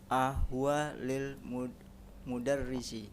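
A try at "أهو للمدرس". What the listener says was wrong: nah, huwa disambung. Intonasinya ahuwa lil mudarrisi kan begitu. Nanya.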